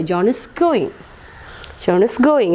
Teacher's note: It is in falling tone. There is no change in it.